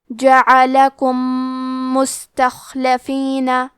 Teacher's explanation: ہم میم ساکن کو دوسرے میم میں ملا کے ایک ہی میم غنہ اور تشدید کے ساتھ پڑھیں گے۔